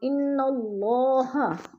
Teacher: اللہ سے پہلے لفظ نون کے اوپر زبر ہے تو اللہ کو پر کر کے پڑھیں گے